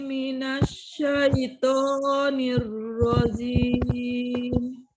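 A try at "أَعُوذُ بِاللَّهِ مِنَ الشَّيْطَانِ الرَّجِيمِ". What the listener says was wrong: U-nya menyongkan dulu ya, dhammah. Zu, zal, hurufnya zu, ujung lidahnya ada di ujung gigi seri bagian atas. A'udzu billahi minasyaitonir tebal nir di atas dit rojim, kemudian jim, bukan zim tapi jim. A'udzu billahi minasyaitonir rajim. Zal zu. Minasyaitonir rajim.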